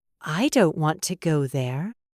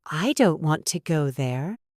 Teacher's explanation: The stressed words are don't and go.